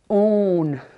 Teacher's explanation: That's nasalized U always has that N sound at the end of it. All the nasalized vowels do.